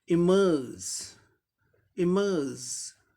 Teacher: आर letter का रॉ sound कहीं भी ऑमिट नहीं होता है, साइलेंट नहीं होता है, इसलिए आर का रॉ आया और बाकी सब सेम वैसे ही हो गया।